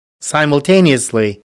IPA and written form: ˌsaɪ.məlˈteɪ.ni.əs.li (Simultaneously)